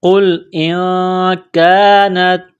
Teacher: نون ساکن کے بعد کاف ہے، حروف اخفا ہے، غنہ کریں گے یہاں نون ساکن پر